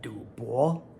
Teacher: We have this third tone du, as in du bo.